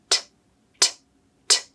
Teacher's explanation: Your tongue tip comes up to the roof of your mouth behind your front teeth. You build up some air behind your tongue, and then you quickly drop the tongue down to release the sound. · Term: true T